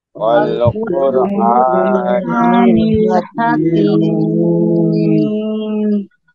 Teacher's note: এখানে ওয়াকফ করলে মিম সাকিন হচ্ছে, তাই এখানে আমরা তিন আলিফ টেনে পড়বো।